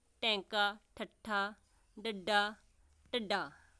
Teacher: ਉਲਟ ਜੀਬੀ ਧੁਨੀਆਂ ਉਹ ਧੁਨੀਆਂ ਹੁੰਦੀਆਂ ਹਨ ਜਿਨ੍ਹਾਂ ਦੇ ਉਚਾਰਨ ਸਮੇਂ ਜੀਭ ਉਲਟੀ ਹੁੰਦੀ ਹੈ